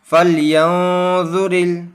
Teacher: گنہ کر کے یعنی ناک میں آواز چھپا کر پڑھنا ہے ہمیں